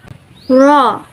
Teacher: Ra, voiced retroflex flap.